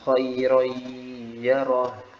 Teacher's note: Jadi ada idgham di gunah di situ, jadi harus ditahan lagi gunanya sedikit.